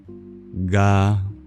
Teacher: we bring our tongue to the back of our throat